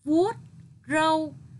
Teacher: Khi đọc từ vuốt râu, lưu ý đọc tròn môi. Đầu lưỡi đặt giữa hai hàm răng khép lại ở tiếng vuốt.